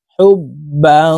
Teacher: হা বা পেশ হুব, বা আলিফ 2 জবর বাং, তানউইনের পরে ইকফার হরফ জিম আসছে, এই কারণে এই বাকে নাকের ভিতরে লুকাইয়া গুন্নার সহিত পড়বো। এই গুন্নাহ ইকফাহ গুন্নাহ।